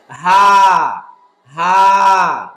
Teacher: ছোট হা নরমাল হা যেটা সেটা হলো কণ্ঠনালীর নিম্ন ভাগ থেকে সহজে কোন প্রেসার দেওয়া বাতাসে চাপ দেওয়া লাগবে না সহজে বলতে হবে হা যেটা বাংলায় অনেকটা হয় আকারের মত হাটা